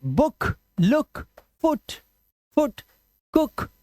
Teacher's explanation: कुछ वर्ड्स में double O का उच्चारण क्या होता है सिर्फ उ लॉन्ग वाउल साउंड नहीं शॉर्ट वाउल साउंड उ उ जैसे अब इसे भूक नहीं पढ़ सकते आप और